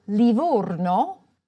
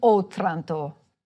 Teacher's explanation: A closed O for Livorno and an open O in Otranto